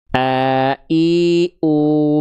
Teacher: Hamzah dilafalkan dari tenggorokan paling bawah atau pangkal tenggorokan. Dalam istilah tajwidnya adalah aqsal halqi, disebut juga pangkal tenggorokan.